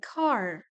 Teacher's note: In many American dialects, the r is pronounced at the end of the word, like car. In some British dialects, the r at the end of the words, like car, is often not pronounced, resulting in car.